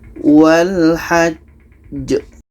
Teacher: Ini qalqalah akbar. Cara bacanya kita berhenti 2 detik, setelah itu kita pantulkan.